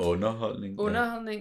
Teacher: The U becomes an O kind sound.